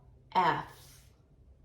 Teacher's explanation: 알파벳 F는 윗니빨이 아랫입술 약간 바깥쪽을 물면서 F 라고 발음하시면 되고요.